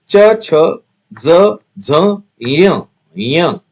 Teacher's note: तालव्य कठोर तालु से निकलते हैं। तालु यानी कि ऊपर का भाग मुंह का ऊपर का भाग च, छ, ज झ, ञ ञ मूर्धन्य कंठ और तालु के बीच का भाग मूर्धा कहा जाएगा उसको।